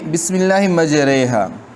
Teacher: امالہ، میلان، الف کا میلان یا کی طرف، جیسے ہمارے اردو میں ہم کہتے، ایک ہے میرا، دوسرا ہے میری، میرا قلم، میری کتاب۔